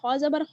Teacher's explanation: खा जो है वो हुरूफ मुस्तआलिया में से है और यानी आपने इसको पुर पढ़ना है, ठीक है, मोटा पढ़ा जाएगा